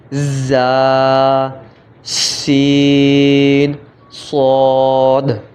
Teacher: ان 3 حروف زا سین صاد کو ادا کرتے وقت سیٹی کی طرح تیز آواز نکلتی ہے، اس لیے ان حروف کو حروف صفیریہ یعنی سیٹی والے حروف بھی کہتے ہیں۔